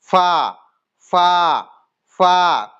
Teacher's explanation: আমাদের নিচের ঠোঁটের ভিজে অংশটি সামনের ওপরে দুই দাঁতের আগার সাথে ধারালো অংশের সাথে লাগিয়ে উচ্চারিত হয় ফা।